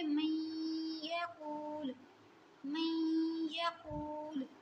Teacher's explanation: اب یہاں پہ آپ دیکھیں نون ساکن کے بعد ہمارے پاس یا آ رہا ہے جو کہ ہے ہمارے پاس ادغام، یہاں پہ ہم ادغام کے ساتھ غنہ کریں گے